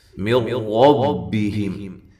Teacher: یہاں نون ساکن کا ادغام ہے لیکن بلا غنہ ہے، غنہ کے بغیر ہے، را کو موٹا کرنا ہے۔